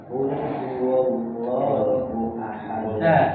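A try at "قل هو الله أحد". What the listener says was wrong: Jadi waw, huwal. Jadi huwal. Jadi wa-nya itu, huruf waw itu dibuka mulutnya. Jangan kurang dibuka. Kalau kurang dibuka nanti menimbulkan seperti wow. Jadi wow jadinya. Wa. Qul huwal. Jadi wa. Qul huwallahu ahad.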